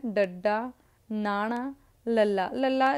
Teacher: ਉਲਟ ਜੀਭੀ ਜਦੋਂ ਆਪਾਂ ਉਚਾਰਦੇ ਆ ਨਾ ਤਾਂ ਇਹਦੇ ਵਿੱਚ ਆਪਣੀ ਜੀਭ ਉਲਟ ਹੋ ਜਾਂਦੀ ਆ, ਫੋਲਡ ਹੋ ਜਾਂਦੀ ਆ। ਮੂਹਰੋਂ ਟਿਪ ਥੋੜ੍ਹੀ ਜਿਹੀ ਉਹਦੀ ਫੋਲਡ ਹੋ ਜਾਂਦੀ ਆ। ਜਦੋਂ ਆਪਾਂ ਬੋਲਦੇ ਆ ਟੈਂਗਾ ਫੋਲਡ ਕਰਕੇ ਬੋਲਦੇ ਆ।